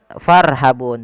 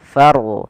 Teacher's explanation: Kemudian farhabun ada huruf ra yang didahului dengan huruf berharakat fathah, maka ra-nya dibaca dengan ra tafkhim, yaitu kita harus menebalkan suara ra-nya